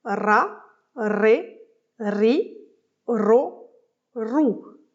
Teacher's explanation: prononcer les syllabes avec des voyelles en roulant le R